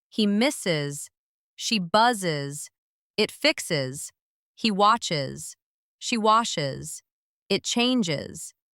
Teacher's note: Third way, is sound, adding an extra syllable. This happens when the verb ends in S, Z, X, CH, SH, or soft G sounds.